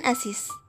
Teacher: posisi akhir fonem Z ini kehilangan statusnya sebagai fonem karena lazim diucapkan sebagai huruf atau bunyi S